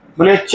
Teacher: तालु का मतलब जीभ सीधा टच होगा दांत के बगल मसूड़े में।